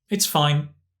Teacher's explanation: It's very much about the intonation, very flat, and you can get that meaning.